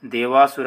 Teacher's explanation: ಪೂರ್ವ ಪದದ ಕೊನೆ ಅಕ್ಷರ ಅ ಬಂದು ಉತ್ತರ ಪದದ ಮೊದಲ ಅಕ್ಷರ ಅ ಬಂದಲ್ಲಿ ಇದು ಅದೇ ಒಂದು ದೀರ್ಘ ಸ್ವರವು ಆದೇಶವಾಗಿ ಬರೋದನ್ನ ನಾವು ನೋಡ್ತೀವಿ